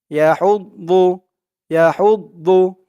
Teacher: ইয়া হুদ দু, ইয়া হুদ দু, মুখটা একটু ভরপুর হয়ে যাবে, দদের উচ্চারণটা করার সময় এরকম মনে হবে যে মুখটা ভরপুর হয়ে গেছে।